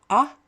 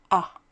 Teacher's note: The first one is pronounced ah with a big open mouth